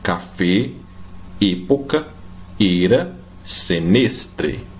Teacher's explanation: a letra E, ela vai ter sempre esse som fechado